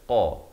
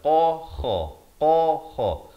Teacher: Qa ni di pangkal lidah. Qa. Ini pula kha di hujung kerongkong.